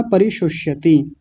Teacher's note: पहले तालव्य श है यानी षल्यम वाला, फिर है षटकोण वाला, इसको मूर्धन्य षकार बोलते हैं। परिशुष्यति, परि को अलग करें, शुष को अलग करें और यति को अलग कर लें।